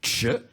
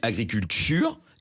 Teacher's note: Si je dis agriculture, eh bien, c'est une africation du T de agriculture